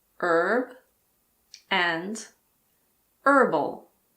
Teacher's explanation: In American English, the H in the words herb and herbal also aren't pronounced.